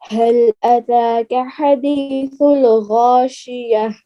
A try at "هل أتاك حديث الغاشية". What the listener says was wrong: حدیث اللہ نہیں کرنا لام میں قلقلہ نہیں ہے حل اتاک جیسے حل اتاک حدیث الغاشیہ